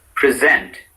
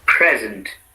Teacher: the accent is on the second syllable when they are used as verbs, on the first syllable in other cases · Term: Word accent